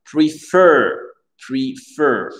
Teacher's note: le e ici devient i, l'accent tonique sur le fer.